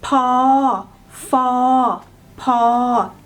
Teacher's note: these three are the low class consonant and are pronounced in mid-tone.